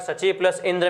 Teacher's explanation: सची में ई दीर्घ है और इंद्र में ई ह्रस्व है, और दोनों शब्दों की जब संधि करते हैं तो ई दीर्घ हो जाता है और सचिंद्र शब्द होता है।